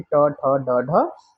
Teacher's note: उल्टी नोक का निचला भाग मुर्धा को स्पर्श करता है ऐसी स्थिति में उत्पन्न ने मुर्धन्य वजीन कहलाते हैं जैसे कि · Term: मुर्धन्य व्यंजन